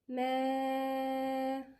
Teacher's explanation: هنا في مد متصل 4 حركات